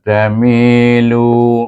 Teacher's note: Jadi dia bukan huruf idgham, bukan huruf halkum, huruf izhar dan juga bukan iqlab. Jadi dia dibaca dengan hukum ikhfa hakiki dengan dua harakat dengung.